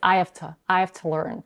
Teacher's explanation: She's getting rid of the h, the first h. So she doesn't say, I have to learn from people who are the best.